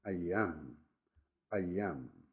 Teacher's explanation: extra E sound to join the two words together